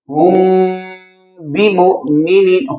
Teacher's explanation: اخفاء شفوی، اگر میم ساکن کے بعد با آ جائے، اب یہاں پہ اخفاء ہوگا یعنی غنہ کے ساتھ ادا کریں گے